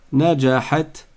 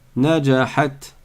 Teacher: Rappelez-vous, le soukoun, ça veut dire que je ne prononce que la consonne du ta. Il n'y a pas de voyelle qui la suit. Najahat. Je m'arrête sur le ta directement.